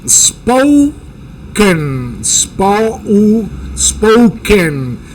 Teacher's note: las o en inglés son unas o u